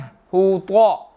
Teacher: حطامہ, حطا, ہوتا نہیں پڑھیں گے اس کو, تا نہیں ہے بلکہ طا ہے, موٹا پڑھیں گے